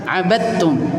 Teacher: Huruf dal hilang. Abadtum langsung ke ta. Enggak perlu abadtum, enggak perlu dalnya kayak nampak mau keluar, enggak. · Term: idgham kamil